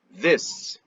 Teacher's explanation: A língua volta para trás para fazer o S. Ela vai entre os dentes para fazer o the